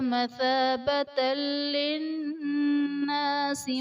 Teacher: یعنی تنوین میں ہم غنہ نہیں کریں گے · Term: ادغام بلا غنہ